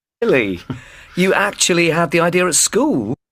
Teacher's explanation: this is not actually a question this is just surprise and that's why Rising tone